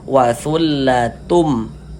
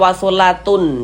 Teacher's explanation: Bunyi tanwinnya ini dia masuk ke huruf mim atau melebur ke huruf mim, sehingganya ini kita baca wasullatum. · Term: idgham bi gunnah